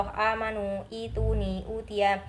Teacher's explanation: setiap a i u yang dibaca panjang panjangnya itu satu Alif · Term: mad badal